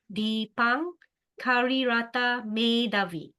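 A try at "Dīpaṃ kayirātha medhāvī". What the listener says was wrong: Dipam Kai, there's a Y here. Kaira.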